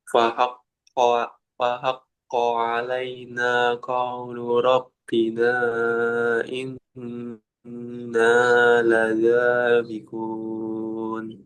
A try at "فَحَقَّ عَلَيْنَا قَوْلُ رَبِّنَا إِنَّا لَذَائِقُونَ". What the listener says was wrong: nanya dua, lada empat. Jadi lebih panjang zadanya. Inna ladzaiqun. Nah, untuk kofnya masih kurang konsisten. Kadang sudah betul, terkadang ketika disambung itu masih ada udara ya. Nanti terus dilatih kofnya.